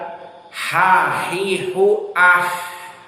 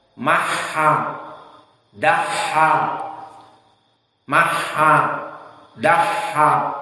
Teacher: Maka ini makhraj dari ha, yang mana dia itu dari halq, dan halqnya adalah mutawassit.